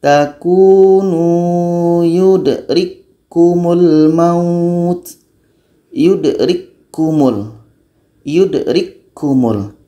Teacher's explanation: Bunyi ka mati yang berangin tidak terdengar lagi karena sudah masuk kepada ka yang kedua. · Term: idgham kamil